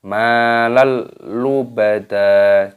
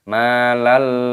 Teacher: ada tanda harokat fathah tanwin yang bertemu dengan huruf lam ini hukumnya dibaca idgham bilagunnah Jadi diilhamkan dimasukkan tanpa berdengung jadi dibaca malel ubadah jangan didengungkan